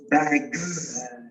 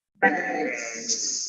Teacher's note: a g is just a k with the vocal cords.